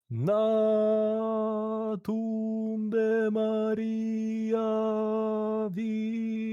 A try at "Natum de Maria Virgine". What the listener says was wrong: Perfect. Exactly dead on.